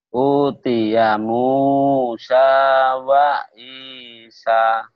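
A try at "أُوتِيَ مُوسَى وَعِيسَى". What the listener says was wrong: Udah lumayan loh, cuma kayak yang masih sariawan ya scene-nya ya. Harusnya gini. U-nya panjang.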